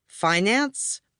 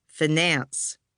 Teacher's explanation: Did the word start out like fine and have the stress on the first syllable, finance? Or did it begin like fin and have the stress on the second, finance?